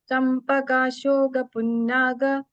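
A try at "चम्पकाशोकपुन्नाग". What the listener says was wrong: This shoka also. Shoga nakabadilla. You have to say Champaka shoka punnaga.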